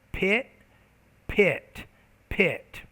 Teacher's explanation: usually when the p's in an initial position it's aspirated more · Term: aspirated p